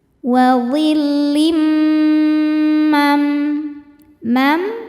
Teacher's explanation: bunyi tanwin ini dimasukkan ke mim atau dileburkan disertai bunyi dengung